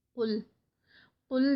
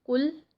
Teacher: یہ موٹا ادا کیا جاتا ہے قاف۔ اور جو کیف ہے وہ باریک ہے، یعنی اس کو تھن پڑھا جاتا ہے ، وہ موٹا نہیں ادا کیا جاتا۔ اب اس کو اگر